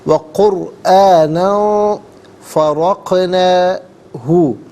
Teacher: اور قرآنً میں نون پر 2 زبر کی تنوین ہے، تنوین کے بعد فرقنا میں فا آ رہا ہے، تو یہاں تنوین کو اخفا کے ساتھ پڑھیں گے۔ اخفا کہتے ہیں ناک میں آواز لے جا کر گنگنانا۔